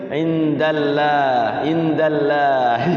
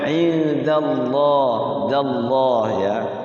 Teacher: Indallah, lafaz Allah dibaca tebal ya, tafkhim. Jangan dibaca tipis.